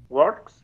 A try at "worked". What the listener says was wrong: Worked. Worked. With a T sound. With a K, it goes with a T at the end.